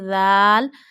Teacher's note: you have to touch your top of the tip of the tongue to the inner edges of top two front teeth. Read very softly.